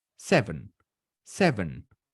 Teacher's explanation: Es una pequeña diferencia. La primera E yo la hago con los labios estirados. La segunda E con los labios relajados.